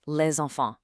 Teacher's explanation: See how les ends with an S and enfant starts with a vowel? French speakers actually link those together with a Z sound. It's called a liaison.